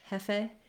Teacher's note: When you're saying it in Spanish, jefe, you want to make sure that you don't have a diphthong there